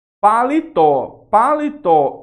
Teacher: palitó é uma oxítona pois a sílaba forte é a última e termina em quê em o Então nós vamos ter isso